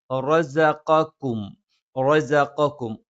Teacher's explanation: സ നാവിൻ്റെ കൂർത്ത അറ്റത്തിൻ്റെ മുകൾ ഭാഗം രണ്ട് വരി മുൻപല്ലുകൾക്കിടയിലായിട്ട് പിന്നിലായി വെച്ചുകൊണ്ട് നമ്മൾ ഉച്ചരിക്കും.